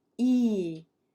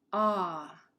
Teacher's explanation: We have high vowels where our tongue is high in our mouth, E. And we have low vowels, ah.